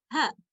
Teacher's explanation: ये हा ये हलक के सबसे निचले हिस्से से अदा होता है